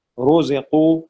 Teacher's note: را کے اوپر پیش ہے، موٹا پڑھا جائے گا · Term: را موٹا